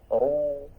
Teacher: Monyongnya hanya saat bunyi u saja. Ru, nah ini monyong.